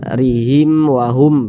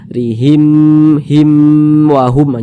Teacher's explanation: sukun setelahnya adalah huruf wau bukan huruf ba bukan huruf mim maka hukumnya izhar syafawi dibaca jelas tak berdengung